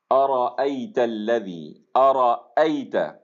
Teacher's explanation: ارأیت الذی، ارأیت، الف کے اوپر فتحہ آ گیا ہے، اس کو بھی آپ نے، یہ حمزہ ہو گیا، اس کو جھٹکے سے ادا کرنا ہے، اقصا حلق سے ادا کرنا ہے۔ را کے اوپر فتحہ ہے، اس کو پر ادا کرنا ہے۔ آگے پھر حمزہ آ گیا ہے، اس کو نرمی اس کے اندر نہیں آنی چاہیے، اس میں سختی ہونی چاہیے۔